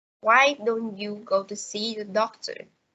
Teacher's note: In this case, the pitch goes up at the beginning and gradually down at the end. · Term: questions functioning as suggestion